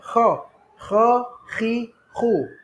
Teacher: Di permulaan halqum, berada di bahagian atas. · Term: huruf kha